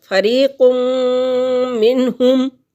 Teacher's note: تو یہاں پر نون تنوین کے بعد میم حروف یرملون میں سے آ گیا، میم کے آنے سے یہاں پر ہم غنے کے ساتھ ادغام کریں گے